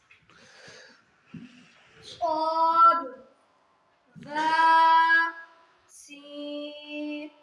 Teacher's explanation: صاد ز سین حروف صفیریہ زبان کی نوک اور دونوں دانتوں کے اندرونی کنارے سے ادا ہوتے ہیں۔